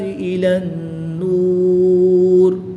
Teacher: واو مدہ کے بعد را کے نیچے زیر ہے، وقف کی حالت میں اس را کو ساکن کر دیں گے. یہاں پر وقف کی حالت میں مد عارض ہوگی.